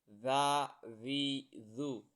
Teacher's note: زبان کی جو نوک ہے وہ آگے والے دو دانتوں کے نوک سے ٹکرانی ہے، تو یہ زال نرم ادا ہوگی